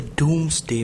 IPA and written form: ˈduːmzdeɪ (Domesday)